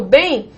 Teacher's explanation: quando eu falo bem, o E é a vogal. E esse M desempenha o papel de I. E ainda nasaliza o E vogal. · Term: ditongo decrescente nasal